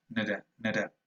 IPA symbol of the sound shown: ə